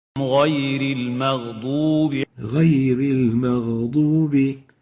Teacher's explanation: So we have to pronounce the ghain at its right articulation and not at a qaf articulation. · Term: Clear ghain, not qaf